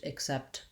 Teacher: we have second syllable stress and that means my clear vowel set is on the second syllable and my first syllable is short and unstressed